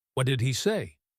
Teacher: He is weak. Say is strong.